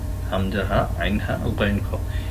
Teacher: হলকের শুরু থেকে হলকের মাঝখান থেকে হলকের শেষ থেকে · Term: ইজহারের হরফ